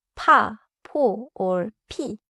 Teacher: 피은 makes an aspirated sound like pa, po, or pi. It is airier than piup.